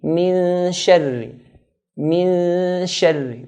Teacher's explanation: Middle part of the tongue is where the sheen is articulated from.